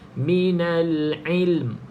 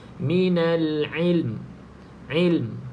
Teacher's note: Lepas kita matikan lam, tutup mulut terus. Bibir atas, bibir bawah rapat. Baru dia bunyi, ada mim dekat belakang ni.